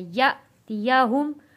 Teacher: یہاں پہ حمزہ کے اوپر جزم ہے تو اس کو ہم نے جھٹکا دے کر پڑھنا ہے